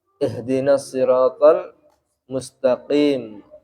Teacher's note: Qof itu tidak boleh dibaca seperti kaf karena beda makhrajnya qof dengan kaf.